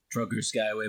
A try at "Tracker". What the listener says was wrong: Tracker. It's Tracker, like Tracker, not Trucker. Not Trucker.